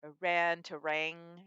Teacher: There's a few cases where it's a one grapheme change, but because it nasalizes the vowel, going from ran to rang, it's actually a two phoneme change